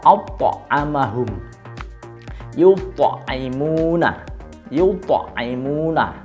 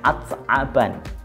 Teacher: Nah, ketika dia berharokat sukun itu juga sudah sangat jelas sekali karena to itu termasuk qalqalah sedangkan ta dia bukan termasuk huruf qalqalah